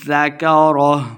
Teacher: زال کو نرمی کے ساتھ پڑھیں گے، اس ذکرہ کو لمبا بالکل نہیں کرنا